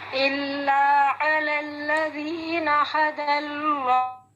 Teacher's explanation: اینڈ پہ ہا کی آواز سینے سے